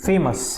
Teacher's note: फे में ऊपर गया एक बार साउंड, अस में नीचे आया। We have 2 stress.